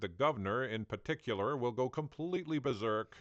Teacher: some Americans might also dissimilate the first R in words like Governor berserk and particular